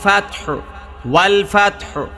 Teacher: নিয়ম আল ফাতহু হরকত হরকত আর হাটা চাপ দিয়ে বলতে হবে হ্যাঁ ফাতহ হালকা হায়ের উচ্চারণ হবে